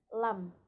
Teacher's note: Jadi dia di ujung lidah, mengucapkannya di ujung lidah, bukan dari dalam lidah. Karena kalau dari dalam lidah dia nggak akan bisa keluar gitu.